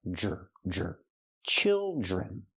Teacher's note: the DR makes the J sound like jump and juice, plus the R, jr, jr. Children.